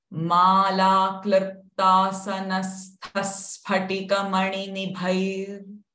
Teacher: the visarga sound will not remain ha, but it will become sa because it is followed by the sa syllable